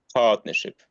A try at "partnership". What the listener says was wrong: Yeah, that's fantastic. Yes, partnership. That's great.